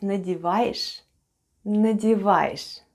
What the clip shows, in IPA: nadyevayesh